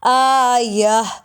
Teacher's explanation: گول تا وقف میں ہا کی آواز دیتی ہے